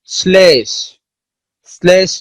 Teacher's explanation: ল ফলার প্রভাবে তালব্য স তার তালব্য উচ্চারণ হারিয়ে দন্তমূলীয় স এর মতো উচ্চারিত হয়, দন্ত স্বর মতো উচ্চারিত হয়, তালব্য স্বর মতো আর উচ্চারিত হয় না, বা অনেকটা বাধাহীন, তালব্য স্বর উচ্চারণটা অনেকটা বাধাহীন থাকে কিন্তু তালব্য স্বর মতো উচ্চারণ হয় না, উচ্চারণ হয় হলো দন্ত স্বর মতো।